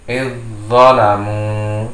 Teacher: Nah, ini huruf za berharokat sukun bertemu dengan huruf zo yang berharokat hidup. Maka suara za dimasukkan ke dalam zo sehingga membacanya idzalamu.